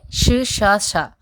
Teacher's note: ఉస్మాలు అంటే ష ష ష ఊది పలుకుతాం కదా